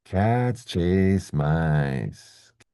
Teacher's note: These are all stressed words. They're important words. So, we need you to hear them.